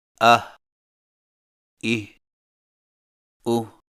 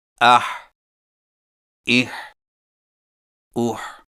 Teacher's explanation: حا حلق سے رگڑ کھاتی آواز ادائیگی کے وقت زبان کی جڑ کو حلق کی طرف مضبوطی سے دباتے ہوئے ادا کریں